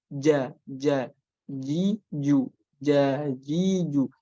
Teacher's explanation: Syiddah itu berarti suaranya tidak mengalir. Udara tidak mengalir, suara juga tidak mengalir. Maka tidak ada sama sekali apapun itu yang keluar ketika mengucapkan jim.